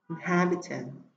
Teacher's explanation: Phương án C, inhabitant, chúng ta thấy là đuôi ant ở cuối không ảnh hưởng đến trọng âm của từ, cho nên chúng ta chỉ xét cái động từ phía trước nó inhabit, và động từ này có âm đầu tiên chữ âm y ngắn, cho nên trọng âm rơi vào âm tiết thứ hai